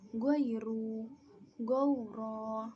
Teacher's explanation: fathah diikuti ya sukun berbunyi ai, fathah diikuti waw sukun berbunyi au dan tidak panjang